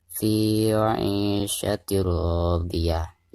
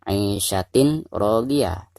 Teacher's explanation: Nah, maka di bacaan di sini itu dinamakan idgham bila guna. Cara membaca tanwin yang di bawah ta ini itu harus dimasukkan langsung ke huruf ro yang ada di depannya. Jadi cara membacanya fi 'ishatir radiyah.